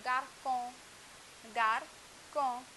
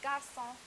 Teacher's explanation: the pronunciation changes from the K sound, garcon, to the S sound, garçon